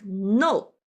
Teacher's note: falling down sharply, like no, an angry sound.